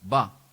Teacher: the fourth tone is ba goes right down